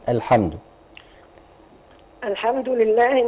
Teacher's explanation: والحاء مرققه اه والميم مرققه كلها كلها مرققه مد طبيعي ولله مد اللام هنا مرققه لان مكسور ما قبلها